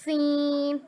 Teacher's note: इसमें भी सीटी निकलेगी और बारीक अदा करेंगे।